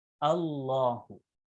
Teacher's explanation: We are reading the letter lam twice because it has a jazm tashdid on top of it. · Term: shadda tashdid